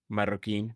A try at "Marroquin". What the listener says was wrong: Marroquin. You have to roll the R's.